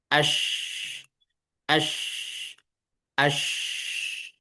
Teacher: Penyebaran udara atau angin dari dalam rongga mulut ketika mengucapkan huruf shin. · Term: tafasyi